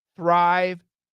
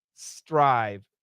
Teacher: the th the tongue's got to be between the teeth the S the tongue needs to be behind the teeth